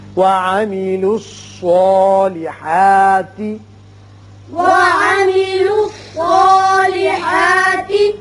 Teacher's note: صاد چونکہ حروف مستعلیہ میں سے ہے لہذا یہ پر پڑا جائے گا، اس کی وجہ سے جو اس کے اوپر کھڑا زبر قائم مقام الف کے ہے وہ بھی پر ہوگا۔